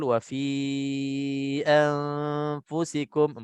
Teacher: kita panjangkan fi itu 4 harakat. Jadi sebabnya mat jaiz munfasil dan yang keduanya ada tanda ombak tu.